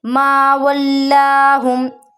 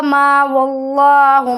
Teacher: यहाँ पर लाम को हम बारीक पढ़ेंगे और एक अलिफ बराबर लंबा करेंगे।